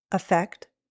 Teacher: The second word, which is written with an E, is usually said with a short I sound, effect. But sometimes American English speakers will use a schwa, effect, or even a long E, effect.